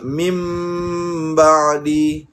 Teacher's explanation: Sepatutnya di situ kita bacakan dengan ditukarkan bunyi nun kepada bunyi mim daripada min ba'di kepada mim ba'di. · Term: iqlab